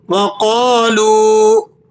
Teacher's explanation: واو مدہ ہے، 1-2 سیکنڈ کھینچ لیں گے